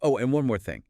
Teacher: So, spoken with a bit more energy. Yeah, maybe a bit higher pitch than the statements around it